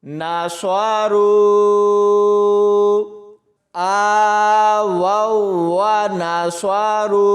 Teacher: واو کو واو کے ساتھ ملائیں گے تو سختی سے پڑھا جائے گا